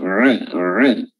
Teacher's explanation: huruf ain kerongkongan atau tenggorokan bagian tengah diapit a, dan huruf ta, ya, memiliki sifat hams, makhrajnya adalah ujung lidah bertemu dengan gigi seri atas bagian belakang ta atau ti.